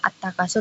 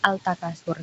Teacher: Jadi di kata at-takasur itu sebelumnya ada alif lam, kemudian setelah alif lam itu ada huruf ta. Nah, ketika ada alif lam yang bertemu dengan huruf idgham syamsiyah maka melebur. Jadi masuknya langsung ke huruf ta-nya itu.